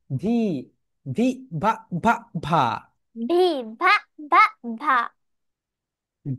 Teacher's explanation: ভি যখন উচ্চারণ করবে উপরের যে দাত রয়েছে নিচের ঠোটের সঙ্গে টাচ করবে